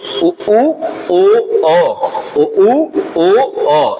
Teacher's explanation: जिनको बोलते समय ओष्ठाकृति यानी ओठ का आकार गोल हो जाए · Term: वृत्ताकार